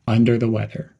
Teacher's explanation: Emphasize the word weather and keep the words under the quick and connected. Keep the whole phrase flowing smoothly.